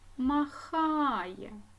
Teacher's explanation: летить наголошений другий склад махає наголошений другий склад